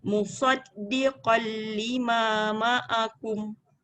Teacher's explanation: Dal tu jangan diangkat lidahnya. Dia terus je sebab dia sabdu. Musaddiqal.